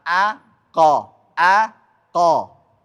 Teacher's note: enggak usah dibuletin karena memang enggak pakai bulat bibir. Qo biasa aja.